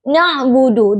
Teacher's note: Huruf ain yang makhrajnya itu di tenggorokan bawah ain dengan huruf ba yang makhrajnya itu di dua bibir. Kesalahan yang sering terjadi seperti pengucapan ain yang tidak ada getaran sehingga terdengar seperti nabudu. · Kata na'budu huruf nun makhrajnya itu di ujung lidah